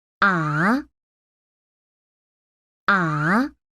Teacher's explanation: When we ask a question, we raise our voice. Right? That is the sound for the second tone. It starts normal and then rises up.